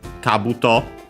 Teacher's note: accent on the first mora